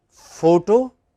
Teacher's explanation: in both cases you have a stress on the initial syllable